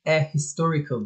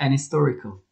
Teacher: Eğer h'nin üzerine bastırıyorsak a historical deriz. H'ye bastırmayacaksak şayet an historical diye yuvarlayarak gideriz.